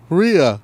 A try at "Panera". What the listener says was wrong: Where the fuck is the I at? Ria. It's not raw. It's Ria. You're saying Ria. Like Rialto. It's Panera.